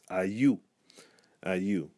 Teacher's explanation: there's a tendency in the language for an intrusive Y to appear between the A and the U